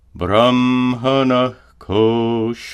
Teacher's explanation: When a Visarga is followed by a ka or ka, it's pronounced as a guttural sound.